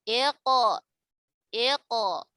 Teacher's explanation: Maka secara otomatis huruf qaf ketika sukun sebelumnya kasroh dia ikut dibaca tebal. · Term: qalqalah mufakhamah